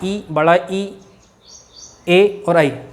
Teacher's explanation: जीभ का नुकीला वाला भाग आगे की ओर टकराता है, मतलब दांतों पे लगता है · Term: अग्रस्वर